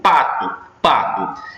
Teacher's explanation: pá é sílaba tônica, to é sílaba átona. O TO é pronunciado com intensidade menor. Tanto é que o to fica tu, pato, pato.